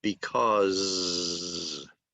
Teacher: It ends in the sound and it's voiced. The last sound in because is a voiced Z sound